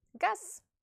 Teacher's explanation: at the end of a word a voiced consonant becomes voiceless · voiceless you have to pronounce it like it's voiceless counterpart so the voice consonant Z will be pronounced s if it's the last letter of a word